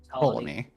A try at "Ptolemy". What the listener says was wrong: The P is silent. Yes,